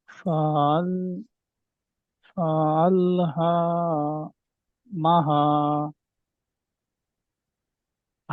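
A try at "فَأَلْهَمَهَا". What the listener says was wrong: হারা টান হবে না, ফা আল হামাহা। ফা আল হামাহা।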